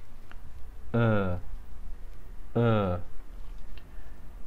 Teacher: مكان لفظ هذا الحرف هو الحنجرة أ، الشفتين في حالة حيادية، في حالة ليست دائرية ولكن شبه دائرية بهذا الشكل أ، اللسان أو رأس اللسان ملتصق في الأسنان السفلية من الخلف بهذا الشكل، يخرج معنا هذا الحرف بشكل طبيعي أ أ.